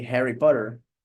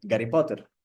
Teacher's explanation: a lot of words in Russian they don't sound like in English and we changed the H sound for G